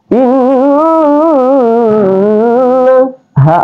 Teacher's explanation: keluar di pangkal tenggorokan